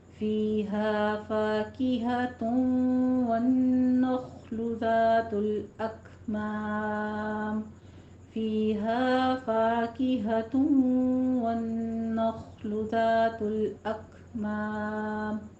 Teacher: ذات الذال میں سیٹی کی آواز نہیں آئے گی، نرمی سے پڑھنا ہے